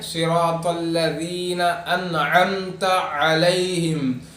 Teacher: الذین انعمت علیہم، یہاں پہ صاد ہے، طا ہے، ذال ہے، ذال کو جو ہے ذرا زبان کو باہر نکال کر پڑھنا ادا کرنا ہے